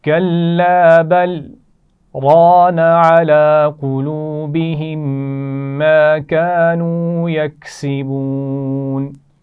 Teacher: تھوڑا سا رک کے پڑھیں گے، لیکن آواز کو روکیں گے، سانس نہیں توڑیں گے. ٹھیک ہے، سانس جاری رہنا چاہیے. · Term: سکتہ